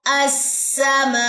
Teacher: آواز کو اوپر اٹھا کے حمزہ جزم کا جھٹکا ادا کیا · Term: نبر